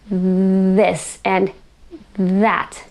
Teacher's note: So the voiced TH sound is found in words such as this and that. I can say this and that by really sticking my tongue between my teeth, this and that.